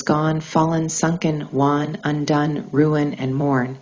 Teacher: during its articulation oral air flow is blocked while resonance redirects through the nasal cavity turning the sound inward